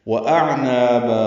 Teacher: وہ ہونٹوں کی نا تمام گلائی سے، حمزہ اقصی حلق سے، عین وسط حلق سے ادا کریں